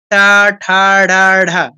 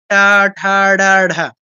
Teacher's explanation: জিহ্বাটা বেঁকে গিয়ে দেখুন, জিহ্বাটা বেঁকে গিয়ে উপর থেকে মূর্ধাতে ঘষা দিয়ে নামছে।